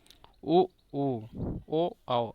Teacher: वृत्तमुखी में उ, ऊ, ओ, औ, अब बोल के देखेंगे, इसमें आपका मुख गोला हो जाएगा